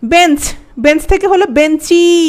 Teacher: বেঞ্চ থেকে হল বেঞ্চি একটা ই যুক্ত হল। এজন্য এটা অন্তসরাগম।